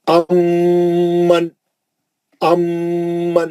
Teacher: मीम का ही गुन्ना हो रहा, नून चलेगा मीम के अंदर, नून का आवाज ही नहीं निकाल रहा, नून नून सख्ती से घुस गया उसके अंदर, मिला दिए।